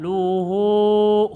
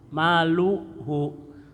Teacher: kenapa di sini hu-nya dipanjangkan? Karena sebelum hu hidup hurufnya.